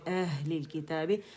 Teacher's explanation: اقص الحلق سے ادا ہوں گے دونوں، حمزہ بھی اور ہا بھی